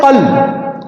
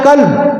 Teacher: آپ قاف کی جگہ کاف پڑھیں گے، معنی بڑا تبدیل ہو گیا۔